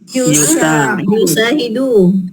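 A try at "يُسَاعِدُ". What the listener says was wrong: La yusa'idu ain yusa'idu. Sa'ada yusa'idu ya.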